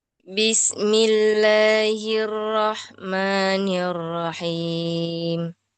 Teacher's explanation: Yang kasrah-kasrahnya jangan miring. I semua bunyinya jangan e.